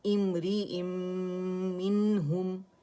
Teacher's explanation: ادغام تام بالغنہ ہو گیا، ٹھیک ہے. نون پوری طرح میم میں چلی گئی، میم مشدد ہو گیا